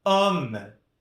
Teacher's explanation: Perceba que aqui o O é mais aberto, né? Não chega a ser um homme, né? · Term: O mais aberto